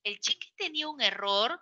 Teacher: También el tono final aquí es ascendente. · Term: tono final ascendente